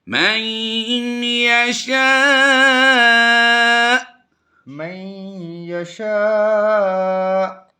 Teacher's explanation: حمزہ کو وقف میں ساکن سے بدل دیں گے، یعنی پیش جو ہے وقف میں جزم سے کنورٹ ہوگی تو ہم یہاں پر جھٹکا دیں گے.